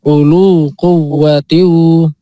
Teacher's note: U-nya pendek, lu-nya panjang